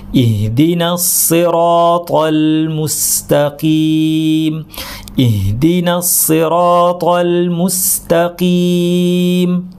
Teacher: সিরাত পুরোটা ভারী, তারপরে আবার তল লাম পাতলা, এটা অনেকে ভারী হয়ে যায়, খেয়াল করবেন।